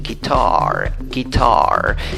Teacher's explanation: Pero ponle, por favor, la fuerza de voz en la segunda sílaba.